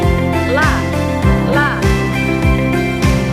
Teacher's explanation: Dengan cara ujung lidah sedikit menekan pada langit-langit mulut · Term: huruf lam